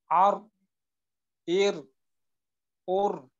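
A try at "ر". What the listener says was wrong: মাখরাজটা আরেকটু আওয়াজটা ধরে রাখা, হালকা একটু তাকরার হয়ে গেল কিন্তু, আর বা ইর উর হালকা একটু তাকরার হয়ে যায় এইভাবে উচ্চারণ করলে। তো এখানে আর আওয়াজটা এইভাবে চালু রাখা, এমনটা। এই যে আর, এইটা হইল তাকরার, এইটার থেকে আমাদের বাঁচতে হবে। আর ইর উর।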